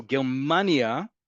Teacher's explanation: The emphasis is on the second to last syllable.